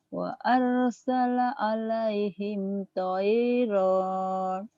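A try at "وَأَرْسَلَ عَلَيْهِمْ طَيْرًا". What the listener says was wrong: Jangan ada ronnya lagi. Wa arsala alaihim tayra.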